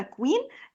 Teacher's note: فلمّا بييجي الQ بعديها الU بنقول عليه كوا تمام؟ يبقى الQ مع الU اللفظ بتاعها الK وبعديها الW ده زي كلمة مثلًا queen ديّة الsound بتاعها queen أوكي؟